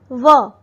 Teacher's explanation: व होठ और दांतों की सहायता से किया जाता है।